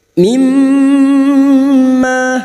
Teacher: mim yang bertasdid, gunnah musyaddadah kita dengungkan selama 3 harokat atau 1,5 alif. Mimma, ma fathah diikuti alif, 2 harokat kita panjangkan.